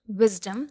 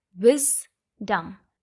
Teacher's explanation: The syllable wiz is stressed and dum is not stressed.